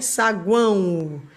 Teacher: Termina em O, mas tem som de U.